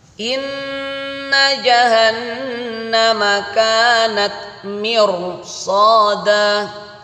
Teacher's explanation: Kasrah bertemu ro sukun dibaca tebal.